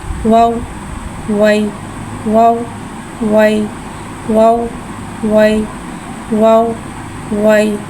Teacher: वाव को एक अलीफ यानी 3 हरकत के बराबर खींच के पढ़ेंगे। वाव होठों की गुलाई के साथ अदा करके पढ़ेंगे। वाव के ऊपर ज़बर है, ज़बर को मुँह खोल के अदा करके पढ़ेंगे।